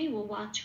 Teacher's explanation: আচ্ছা, আগে হর্ষটা পড়েছিল, এই হর্ষ থেকে শুরু হবে ও ওয়াচ, যথারীতি বটাকে ও প্লাস আ হিসেবে লিখলাম, ব বলে উচ্চারণ করতে পারবো না, ওয়া বলতে হবে, ঠোঁটটা খুলে উচ্চারণ করতে হবে